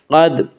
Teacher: قاف کو پر پڑھا جائے گا، قاف حروف مستعلیہ میں سے ہے، حروف مستعلیہ 7 ہیں جن کا مجموعہ خص زغ تنقیز ہے، یعنی خا، صاد، ضاد، غین، طا، قاف، ظا، جو ہمیشہ ہر حال میں پر پڑے جاتے ہیں۔